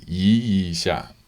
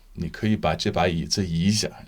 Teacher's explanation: 一 下 is very quick and 5th tone. Both of those characters are 5th tone.